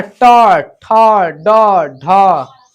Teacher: तो ट वर्ग जो है में ट वर्ग का उच्चारण किससे होता है? मूर्धा से होता है। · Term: मूर्धन्य वर्ण